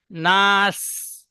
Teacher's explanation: সিন পাতলা করে, সিন্না, সিটি মারার মতন, না, নাস। জি নাস, জি, সুন্দর নাস।